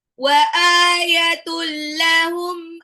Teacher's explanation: tanwin ketemu dengan lam itu idgham bila guna langsung lebur aja enggak usah ditahan